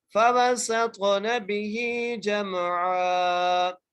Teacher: اکثر کا لوگ یہاں پر نا میم پر قلقلہ کر دیتے ہیں. میم حرف قلقلہ میں سے نہیں ہے, یہاں پر قلقلہ نہیں ہوگا